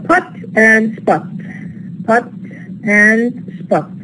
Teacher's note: Here we have the pa in pot is actually aspirated, whereas in spot is not aspirated. The pa at the underlying level is not aspirated, then it becomes aspirated at the phonetic level.